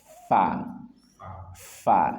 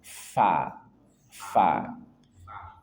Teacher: fa ujung gigi atas bertemu dengan perut bibir bagian bawah. Fa fa fa dan dia hames maka keluar nafas.